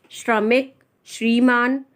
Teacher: ये श्र जो है ये इसमें शीटी वाला सा होगा, शलजम वाला। ये आप सब्जी वाला सा नहीं बोल सकते हैं। ठीक है, ये तालु से बोला जाता है, तालव्य श